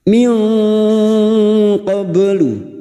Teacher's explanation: nun sukun bertemu qaf ikhfa hakiki, kita samarkan bunyi nun sukun dan mendengung selama 3 harakat. Min qablu, ba sukun yang mati asli di tengah kalimat qalqalah sugro.